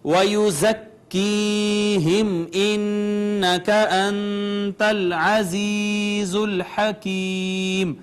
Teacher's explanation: زا ہے یہ حروف صفیریہ میں سے ہے. اس کو بھی ذرا زور سے پڑھتے ہیں، سختی سے پڑھتے ہیں. سیٹی کی آواز اس میں سے آتی ہے. یا ما قبل مکسور یا مدہ ہے، میم ساکن اظہار شفوی، نون مشدد غنہ، نون ساکن اخفا، یا ما قبل مکسور یا مدہ، پھر یا ما قبل مکسور یا مدہ، اور اینڈ پہ سکون عارضی، لہٰذا یہ ہوئی مد عارض.